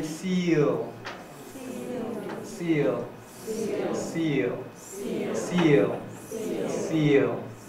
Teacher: pronounced as a dark l so when you pronounce this word you have to keep the tongue tip articulation and then raise the back of your tongue towards the soft palate · the tongue tip touches the alveolar ridge, and then the back of the tongue is raised towards the soft palate